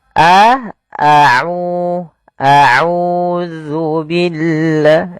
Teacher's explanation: adanya dommah bertemu dengan huruf wau maka kita panjangkan aunya dua harakat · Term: mad thabi'i